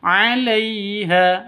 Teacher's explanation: lai sifat lin, lentur, lemes, tidak boleh disentak, tidak boleh dipanjangkan.